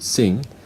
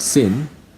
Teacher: The last sound of the word sing is a velar sound. The last sound of the word sin is an alveolar sound.